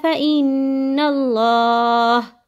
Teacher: اب دیکھیں یہاں آپ نے اللہ کے نام کو باریک کیا تھا، یہاں نون کے اوپر زبر ہے تو ہم اللہ کے نام کو موٹا کریں گے